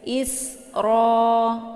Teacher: Sin ini dibaca anginnya jelas ya karena Sin ini sifatnya adalah safir jadi sopir itu ada sisa anginnya agak sedikit jelas dan bacaan · Jadi sofir itu desis anginnya agak sedikit jelas, dan bacaan sin ini dibaca tipis